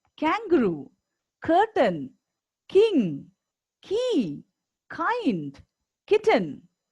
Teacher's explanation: And we already learned that to make this sound "k," the back of the tongue touches the end of the roof of your mouth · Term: k sound